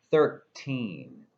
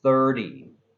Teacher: Now, there's a T inside both words. With teen, it sounds like a T, and with 30, it sounds like a D.